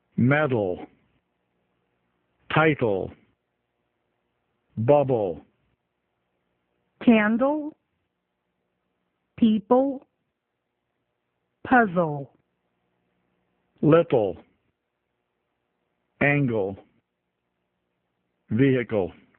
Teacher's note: L-E também tem som de U, como se fosse só L